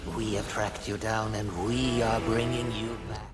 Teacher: Skrael's voice is incredibly fluid, shifting from breathy whispers to throaty, growling proclamations.